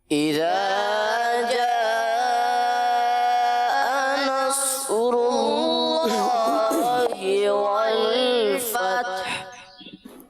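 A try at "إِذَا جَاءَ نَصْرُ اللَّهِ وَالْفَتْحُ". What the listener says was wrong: اس آیت کریمہ کے آخر میں والفتح، اس کو ذرا خصوصی طور پر اس پر توجہ فرما لیجئے کہ والفتح پڑھیں گے تو آخر میں ہا پر تو وقف ہو رہا ہے، لیکن ہا پر وقف کے معنی یہ نہیں کہ ہا کو حذف کر دیا جائے.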